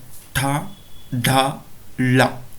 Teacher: ನೋಡಿ, ಈ ಅಕ್ಷರಗಳನ್ನು ಉಚ್ಚಾರಣೆ ಮಾಡೋ ಸಂದರ್ಭದಲ್ಲಿ ನಮ್ಮ ನಾಲಿಗೆಯ ಮುಂಭಾಗ ಏನಿದೆ ಅದನ್ನು ಮೇಲ್ಭಾಗದ ತುದಿಗೆ ಸ್ಪರ್ಶ ಮಾಡುವುದರ ಮೂಲಕ ಈ ಅಕ್ಷರಗಳನ್ನು ಉಚ್ಚರಿಸುತ್ತೇವೆ · ತಾಲವ್ಯ ಅಂತೇಳಿದ್ರೆ ನಾಲಿಗೆಯನ್ನು ಹಿಂಭಾಗಕ್ಕೆ ಮಡಚಿ ಮೇಲ್ಭಾಗದ ದವಡೆಯನ್ನು ಟಚ್ ಮಾಡೋದ್ರ ಮೂಲಕ ಈ ಅಕ್ಷರಗಳನ್ನು ಉಚ್ಚಾರಣೆ ಮಾಡ್ತೀವಿ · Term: ತಾಲವ್ಯ ಧ್ವನಿಯ